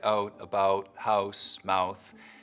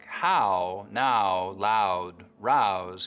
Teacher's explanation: raising the start of the diphthong in words like out and about, so that instead of it starting very open, ow, it's starting from somewhere in the middle of the mouth. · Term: Canadian raising